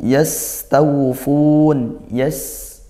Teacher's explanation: yas sinnya didesiskan sempurnakan sifatnya